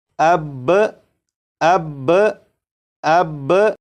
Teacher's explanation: با کو پڑھنے کے بعد آواز کو ختم نہیں کریں گے بلکہ آواز کو تھوڑی دیر کے لیے روکیں گے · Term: تشدید